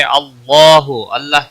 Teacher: अल्लाह के लाम को मोटा पढ़ेंगे जबर की वजह से पीछे जबर है इसलिए अल्लाह का लाम मोटा पढ़ा जाएगा इसके ऊपर खड़ी जबर